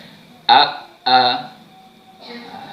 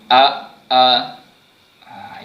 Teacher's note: huruf hamzah yang keluarnya pada pangkal kerongkong kita